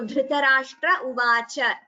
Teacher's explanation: Cha is a hraswa, that is a short vowel. So please do not prolong it as cha while chanting.